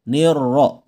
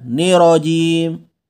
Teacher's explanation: ini ingat huruf ra di kata ar-rajim dia bertasdid ya. Gandakan bunyinya, double. Nirro, bukan nirojim.